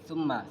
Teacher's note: Summa ini ada huruf mim yang bertasydid. Ini merupakan bacaan gunnah. Sebagaimana bacaan gunnah itu bacaan yang dengung